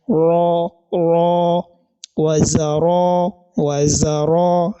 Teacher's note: letter Ra is having fatha, the sound is always heavy.